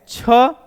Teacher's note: छ भी महाप्राण है लेकिन वह घोष नहीं है